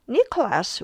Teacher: Nicholas will be just Nikorasu because the stress is at the beginning